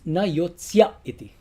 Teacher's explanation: when E comes into contact with the I in iti, it becomes na yotsya iti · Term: sandhi